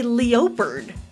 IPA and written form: li o pərd (leopard)